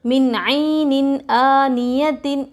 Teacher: نون ساکن کے بعد حروف حلقی میں سے عین آ رہا ہے، نون کی آواز کو ظاہر کر کے بلا غننے کے جلد پڑھیں گے